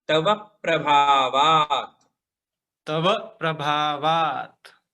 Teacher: हाँ, तव प्रभा, देखिए प्र है ना, प्र ये संयुक्त अक्षर है, दो अक्षर जुड़े हुए प्र में, प और र। तो जब संयुक्त अक्षर होते हैं उसके पहले वाले अक्षर पे जोर दिया जाता है, तो व पे जोर देंगे